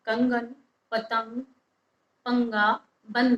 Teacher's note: इसमें जो हवा है वह हमारे नाक से बाहर निकलती है इसके लिए इन वर्णों को नासिक के भी कहा जाता है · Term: अनुस्वार